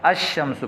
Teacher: لام پڑھنے میں نہیں آئے گا، الشمس نہیں بولیں گے، بلکہ لام کو اس حروف شمسیہ کے ساتھ تبدیل کر کے پھر حروف شمسیہ کو شمسیہ میں ادغام کریں گے، یعنی اس پر تشدید پڑھیں گے ، الشمس پڑھیں گے۔ جبکہ حروف قمریہ میں الف لام کا